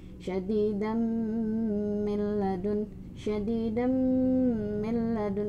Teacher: digabungkan lalu ditahan di hidung selama dua sampai tiga ketukan. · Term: idgham bighunah